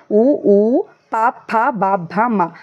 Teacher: పావర్గం పలికేటప్పుడు 2 పెదాలు కలుస్తాయి కాబట్టి పెదవుల సహాయంతో పలికే అక్షరాన్ని మనం ఓష్ట్యాలు అంటాం